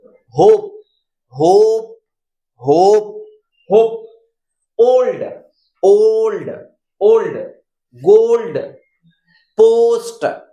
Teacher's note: ओ को थोड़ी देर हमें पकड़ के रखना है, हमें 1 या 2 सेकंड होल्ड करना है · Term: दीर्घ उच्चारण